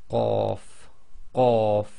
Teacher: the back of your tongue effectively touch the very back of the soft palate and blocks the air before you release the sound.